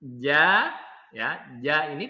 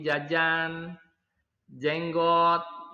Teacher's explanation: bahasa Indonesia jne-nya itu agak maju ke depan sedangkan kalau dibawa di dalam bahasa Arab itu huruf Jim itu agak mundur naik ke atas sedikit